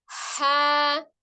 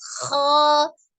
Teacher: bunyi ha dari tenggorokan bagian tengah ya, tidak sama dengan kho